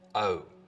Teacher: the vowel sound in boat, most, hope starts with the tongue further forwards in the mouth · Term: Goat fronting